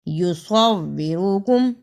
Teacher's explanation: یصورکم، اسے یصورکم نہیں پڑھنا، صاد کی جگہ پہ سین کی آواز نہیں آنی چاہیے